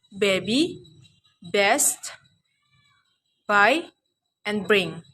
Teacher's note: Organ use is lips, produced by uttering two lips together as in sound ba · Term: Bilabial sound